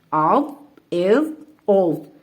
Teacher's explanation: اب آپ دیکھیں ہم نے اس کو پر پڑھا ہے اور نرمی سے پڑھا ہے کیونکہ یہ حروف مستعلیہ میں سے ہے، اور جب پر حروف ہوتے ہیں ان کے ساتھ جو حمزہ ہوتا ہے وہ بھی پر ہو جاتا ہے، یعنی موٹا پڑھا جاتا ہے۔